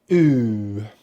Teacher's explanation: Now to make this sound, we start with the lips rounded, as we did in the W sound for the W consonant. The jaw is only open just a little bit, but what's very important is your tongue is drawn right back and up at the back of the mouth. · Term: long vowel sound, oo